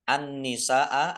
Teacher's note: dibaca masuk ke huruf berikutnya yaitu Nun ditandai nunnya ada tasdidnya Nun tasdid dibaca ghunah atau mendengung · Nun tasdid dibaca ghunah atau mendengung mendengung dua fathah Al tetapi karena bertemu dengan huruf hamzah dalam satu kata maka menjadi mad wajib muttasil dibaca panjang